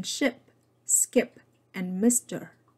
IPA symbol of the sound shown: i